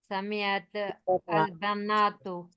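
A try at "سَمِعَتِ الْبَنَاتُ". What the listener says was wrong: अब देखिए, अब यहाँ पे क्या मुश्किल हो रही है, दो साकिन इकट्ठे आ गए, इल्तकाउ साकिनैन, दो साकिन इकट्ठे हैं। तो अरबी में ऐसे नहीं होता, अरबी में आपको क्या होता है, हरकत लगानी पड़ती है पहले वाले को। जब दो साकिन इकट्ठे आ जाए, साउंड नहीं है ना अब, ठीक है।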